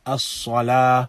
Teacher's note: These three letters are recited with the tongue in the lower palate of the mouth. But with Sad, then the back of the tongue is raised with its recitation, and the air within the mouth, and this is where sometimes the error occurs with some who recite Sad by raising the tongue to the upper incisors.